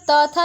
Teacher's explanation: यह दंत व्यंजन है